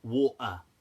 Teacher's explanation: in the UK they pronounce the T in certain things as a kind of glottal stop